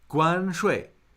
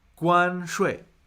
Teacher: that is first tone fourth tone